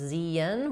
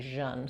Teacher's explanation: In an American English, we don't say this as zien, we tend to just say jeun, so we use the zh sound.